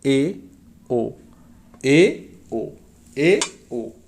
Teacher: अर्धसंवृत्त माने आधा बंद होगा। जिह्वा ऊपर की ओर उठकर बीच में आती है